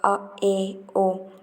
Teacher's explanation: अर्ध विवृत स्वर, जिनके उच्चारण में मुख आधा खुलता है, जैसे अ, ए, ओ।